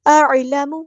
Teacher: لام باریک ادا کرنا ہے، میم کو لمبا نہیں کرنا